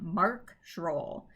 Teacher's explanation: both of those names get full stress because there's just the one syllable to them